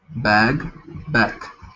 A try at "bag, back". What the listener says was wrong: Perfect, yeah.